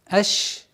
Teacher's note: Аш произносим максимально мягко, четко. Аш с применением свойства тафаши, то есть ш.